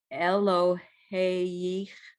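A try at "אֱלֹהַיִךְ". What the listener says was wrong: Look under the hay. What vowel is that? It is a ah. Eloha, but when you put the hay with the yud, you hear hi.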